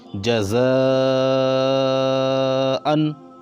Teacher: یہ مد ہے، اس کو کھینچنا ہے، 4 الف کے برابر